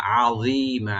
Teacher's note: আইনটাকে যেন গলার মধ্যখান থেকে আসে, এভাবে জটাকে একটু ডিপ করে একালিফ টানবো, আর মিমে একালিফ টেনে আমরা ছেড়ে দিয়ে মধ্যে আওয়াজ হয়ে যাবে আযীমা।